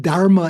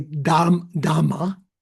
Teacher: rather than having the conjunct consonants R followed by M, they just double the M